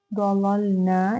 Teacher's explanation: نا میں الف مدہ ہے، 2 کاؤنٹس لمبا کریں گے